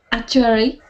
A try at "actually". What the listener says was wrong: Yes, you said a typical Chinese pronunciation is to mix up the r, w, and l sounds. So yours sounded like actuary, something like that.